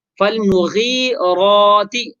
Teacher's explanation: لہذا را کو پر کر کے یعنی موٹا کر کے پڑھیں گے